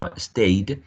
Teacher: when you say stayed, you're adding a voiced ending d, because the final sound here, a, right, it's a diphthong, and diphthongs and vowels are all voiced, as so you would add d to all voiced sounds, consonants, or vowel sounds.